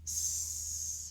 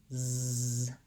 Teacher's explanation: Versus the sound that Z makes, Z, my throat has vibration, my vocal folds are vibrating to make that Z sound · when I say the sound that S makes, S, and I feel my throat, there's no vibration there